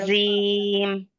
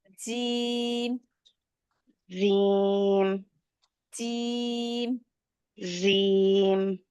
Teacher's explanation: এরকম না জিম হচ্ছে জিম উচ্চারণটা আমি বলি কোথা থেকে হয় জিম উচ্চারণটা হচ্ছে কোনো দাঁতের সাথে লাগিয়ে হয় না জিহ্বার মধ্যখানটা জাস্ট উপরে লাগবে জিহ্বার জিম হ্যাঁ জিম জামা এরকম আমরা বলি না জাম হ্যাঁ